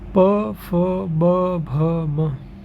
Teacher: ये ओष्ठ्य ध्वनियाँ हैं, अर्थात हमारे होठों का मिलन होता है, ऊपरी होठ और निचले होठ। इसको द्विओष्ठ्य भी बोला जा सकता है।